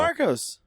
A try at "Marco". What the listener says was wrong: Do you think his name is Marco? There's no S. There's no S.